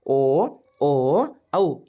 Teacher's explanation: ಈ ಅಕ್ಷರಗಳು ಕಂಠ ಮತ್ತು ತುಟಿ ಎರಡು ಇಲ್ಲಿ ಕೆಲಸ ಮಾಡುತ್ತವೆ ಆ ಅಕ್ಷರಗಳನ್ನು ಉಚ್ಚಾರ ಮಾಡುವ ಮುಂದೆ ಕಂಠನು ಕೆಲಸ ಮಾಡ್ತೈತಿ ತುಟಿನು ಕೆಲಸ ಮಾಡ್ತೈತಿ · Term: ಕಂಠೋಷ್ಟ